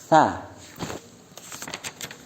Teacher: Makhrajul hurufnya bertempat pada ujung lidah mengenai ujung dua gigi depan atas.